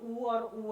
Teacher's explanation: स्वरों में जो ऊ और ऊ है, जब हम इनका उच्चारण करते हैं तो ओंठ आपस में मिलने की कोशिश करते हैं। तो छोटा ऊ और बड़ा ऊ आपका क्या हो जाएगा, ओष्ठ्य हो जाएगा।